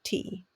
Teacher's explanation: it's aspirated it has that little push of air that you have to have going on to make the sound